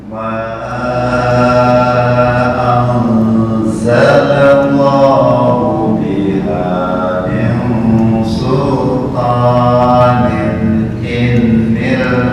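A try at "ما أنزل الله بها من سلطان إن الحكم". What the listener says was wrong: Bukan inil. Zalal lam jangan ditambah tasydid ya. Ma anzalallahu biha min sultanin inil hukm. Za bukan za. Jangan tercampur dengan zal. Za. Ikhfa anzalallahu biha.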